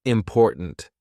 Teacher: My tongue is there. It's ready to do the T, but it doesn't release. We just go, important.